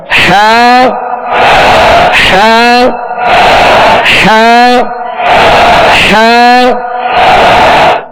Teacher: इसको वस्ते हल्क से बिल्कुल इजी अदा करना है